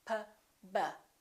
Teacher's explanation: P and B have the same point of articulation because both of them require the lips to close